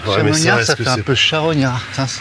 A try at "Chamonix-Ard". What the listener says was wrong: Faut pas prononcer le D, c'est tout.